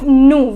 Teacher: The pronunciation is nous. Will not pronounce the last consonant S.